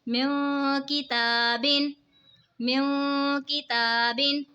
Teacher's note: نون ساکن کے بعد حروف اخفا کا کاف آ رہا ہے تو اخفا ہوگا یعنی غنہ کر کے پڑھیں گے